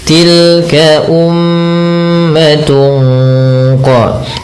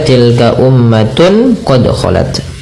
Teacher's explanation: ikhfa hakiki yang dimana suara tanwinnya disamarkan kepada huruf qaf